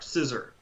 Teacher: In American English, for instance, we tend to pronounce that R quite strongly, even when it's at the end of a word or after a vowel.